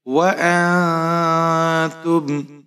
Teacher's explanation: تو یہاں آپ نون ساکن پر اخفا کریں گے، ناک میں اپنی آواز کو چھپائیں گے۔ تا کے اوپر پیش ہے، میم ساکن ہے، تا کو میم کے ساتھ ملائیں گے۔